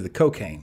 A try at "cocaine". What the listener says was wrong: But the emphasis on the wrong syllable?